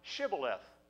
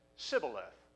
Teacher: instead of a sh sound, it came out a s sound.